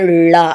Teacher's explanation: இது என்னென்னா நாவினுடைய நுனி மேல் நோக்கி வளைந்து வருடுவதால் நீங்கள் சொல்லி பார்க்கும்போது ழா, நம்ம நாக்கு நல்ல வளர்ச்சி தான் இந்த ழா வரக்கூடியது. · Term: சிறப்பு லகரம்